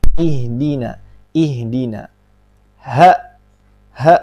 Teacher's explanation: huruf ha berada di pangkal tenggorokan juga dia huruf yang ringan